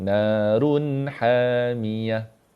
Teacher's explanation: Run tak boleh lambat. Dia tak dengung. Kalau run lama dia macam dengung.